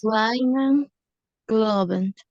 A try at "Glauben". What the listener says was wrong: Igual, me está haciendo, le escucho como una O, como glow, y debe ser glau.